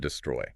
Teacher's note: It goes unstressed then stressed.